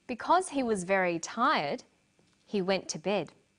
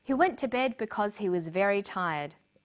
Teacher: Notice the pause. He went to bed because he was very tired. There's no pause.